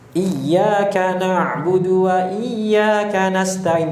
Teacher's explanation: Ditekan karena bertasydid, kemudian ditinggikan suaranya dibandingkan huruf yang lainnya. Tapi ditinggikannya jangan terlalu ekstrim juga. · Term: nabar